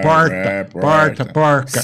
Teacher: então temos aqui o r retroflexo de porta